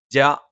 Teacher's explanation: ജ നാവിന്റെ മധ്യഭാഗം മേലെ അണ്ണാക്കിലാണ്